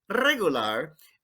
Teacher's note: don't forget to trill that r it makes it so spanish